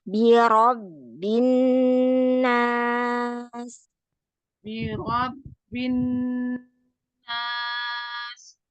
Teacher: roknya kurang tebal, naikkan pangkal lidahnya